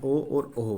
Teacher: कंठ और ओष्ठ दोनों से इनका मतलब यहाँ पे उच्चारण होता है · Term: कंठोष्ठीय स्वर